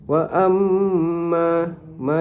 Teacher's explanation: wajibul gunnah. Wajibul gunah dibaca dengung dua harakat dan adanya huruf adanya mad asli dibaca panjang dua harakat.